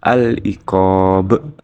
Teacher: aliqob yaitu ada huruf Qalqalah ba yang matinya karena dibaca wakaf cara membacanya memantulkan huruf ba dengan tebal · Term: Qalqalah Kubro, qalqalah kubro